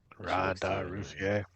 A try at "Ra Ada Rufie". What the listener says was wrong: Very well. There is no E, but otherwise, splendid.